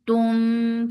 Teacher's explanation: Man, tum for the circle lips. And this is ikhfa shafawi, so keeping the sound in your nose for a longer time because there is gunna, akmal gunna